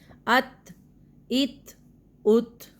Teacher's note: تھ والی آواز تھوڑی سی آتی ہے